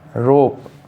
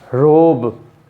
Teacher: the first word of each pair ends with a voiceless sound and the second word with a voiced sound